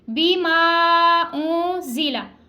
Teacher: آگے اونزلہ نون ساکن کے بعد زا گئے، اخفا کا قاعدہ لگ رہا ہے، ہم یہاں پہ غنہ کریں گے، زا کو سختی کے ساتھ سیٹی کے ساؤنڈ کے ساتھ ادا کریں گے.